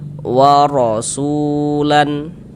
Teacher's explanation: Nah, jadi huruf ro-nya dibaca tebal, sehingganya pangkal lidah kita naik terangkat ke atas. Kita tebalkan huruf ro-nya.